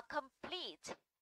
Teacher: complete thì trọng âm phải rơi vào plete